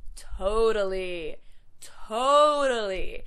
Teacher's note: Next, totally. So again, that middle T turns into a D sound